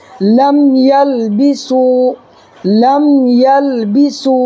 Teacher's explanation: میم ساکن کے بعد میم اور با کے علاوہ کوئی بھی حرف آ جائے تو میم کو ظاہر کر کے پڑھیں گے، اس کو اظہار شفوی کہتے ہیں. · واو ساکن سے پہلے سین کے اوپر پیش ہے تو واو مدہ ہوگا، واو مدہ کو ایک الف برابر کھینچ کر کے پڑھیں گے